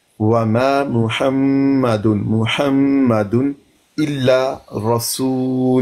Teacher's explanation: आगे मीम मुशद्दद है, नून मुशद्दद हो या मीम मुशद्दद हो, दोनों पर गुन्ना किया जाता है।